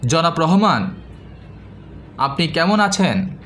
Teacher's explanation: আপনারা অবশ্যই খেয়াল করেছেন যে আমার কথার মধ্যে রহমান এবং আছেন এই দুটি শব্দ জনাব আপনি কেমন থেকে একটু উচ্চ লেভেলে অবস্থান করছিল। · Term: স্বরতরঙ্গ